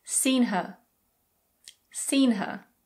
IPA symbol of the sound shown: hə